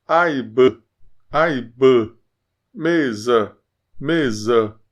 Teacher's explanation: Mas não é um A aberto. É um intermediário. · Fica entre o som de A e E.